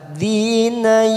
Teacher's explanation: nun sukun bertemu fa, ikfa ausat kita samakan 3 ketuk pada huruf nun sukun. Siap masuk pada huruf fa, bibir kita siap-siap membunyikan huruf fa.